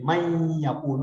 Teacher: وہ نون جو ہے وہ بیچ میں سے ڈراپ ہو جاتا ہے، پوری ساؤنڈ اس کی نہیں رہتی. من یقول، آپ دیکھیں من یا، ہم من یا نہیں کرتے، من یا نون نہیں کرتے پورا. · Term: غنہ